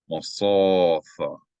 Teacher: There's no vowel with the aleph, so the aleph is silent.